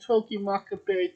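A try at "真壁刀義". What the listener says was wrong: Togi Makabe, not Maccabee. It's not a Jew. It's not a Maccabee.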